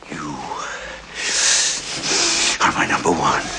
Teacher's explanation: a quick impression of Grissom, complete with Jack Palance's signature breathy voice